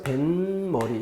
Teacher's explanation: 니은음이 더 생기면서 뱃머리 이렇게 소리가 납니다. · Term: 사이소리